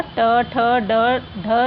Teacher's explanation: हिंदी की मूर्धन्य ध्वनियाँ हैं